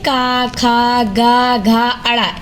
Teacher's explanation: कंठ मतलब हमारे गले से जो निकलता है उसकी सहायता से बोले जाते हैं